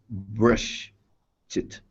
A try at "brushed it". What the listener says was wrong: Like that. But connect them together.